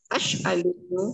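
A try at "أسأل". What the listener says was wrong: Ustaz, sin dengan sin. As'alu dengan sin. Bukan dengan shin. Sin. Sa'ala yas'alu.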